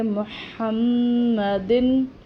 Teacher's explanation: ادھر میم کے اوپر شد ہے تو اس پر غنہ ہوگا